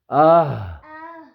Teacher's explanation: گلے کا سب سے نیچے والا حصہ جو ہمارے سینے کی طرف ہے. ٹھیک ہے اس سے حمزہ اور ہا ادا ہوگا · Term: حروف حلقی